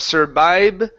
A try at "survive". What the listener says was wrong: you're pronouncing B sounds like boy. Okay, so instead of vibe, okay, it's a V. So your teeth need to touch the top of your lip